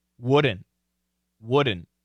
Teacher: In American English, the N is a strong sound, and it can cancel the T. So the N, let me go back over here, is a bold, strong sound.